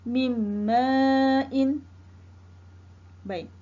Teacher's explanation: nun sakin bertemu dengan huruf mim. Mim merupakan huruf idgham ma'al gunnah. Bermakna hendaklah dibaca dengan dengung. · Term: idgham ma'al ghunnah